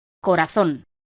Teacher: La palabra corazón, de 3 sílabas, es aguda porque tiene la fuerza de acentuación en la última sílaba, zon.